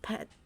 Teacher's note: P as in pet, which is aspirated, meaning a puff of air follows the P